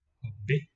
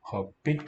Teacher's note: that characteristic tonal upstep to the weak syllable